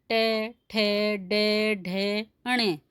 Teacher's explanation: हमारी जीभ तालु से थोड़ा ऊपर जो हमारे ऊपर गड्ढे नुमा भाग है उसका स्पर्श करती है, उसे मूर्धा कहते हैं।